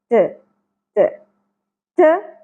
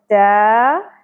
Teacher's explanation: تا باریک ہوگی، ہلکی سی تھ کی ساؤنڈ آنی چاہیے لیکن اتنا بھی نہ ہو کہ ہم اس کو کلیئرلی تھا پڑھیں